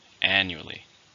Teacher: How many syllables are in annually? 4. Stress on the first.